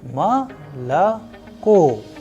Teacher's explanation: the stress or the udarenie is falling onto the last O, and that is why the first two O sounds like A.